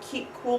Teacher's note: that keep cool pay attention to where the cup phoneme is the and key would be towards the middle in front and cool is going to come back the reason for that is they assimilate to those neighboring sounds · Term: assimilation